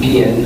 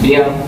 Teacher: So if you were good, you would say, je suis bien, which you'll notice again that you stop pronouncing after the last vowel, so you don't pronounce the N. It's not bien, it's bien, which means I'm good.